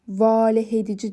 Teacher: Amma valeh edici sözündə A uzanır. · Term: uzanan sait